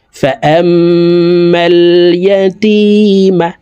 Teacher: হইলে সর্ব অবস্থায় নাকের বাসি থেকে গুন্না করিয়া পড়িতে হয় তো এই জবরওয়ালা হামজাটি তাসদিদওয়ালা মিমের সাথে 3 সেকেন্ড পরিমাণ গুন্না করে পড়ব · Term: ওয়াজিব গুন্না